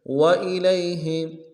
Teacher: لام کو یا کے ساتھ ملانا ہے، یا لین ہے، بغیر کھینچے پڑیں گے